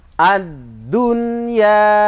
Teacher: Jadi langsung saja tidak boleh didengung karena bacaan izhar. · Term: izhar wajib